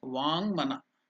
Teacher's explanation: Because Ma is a nasal sound and Vak, when joined together, it becomes Vang Manaha.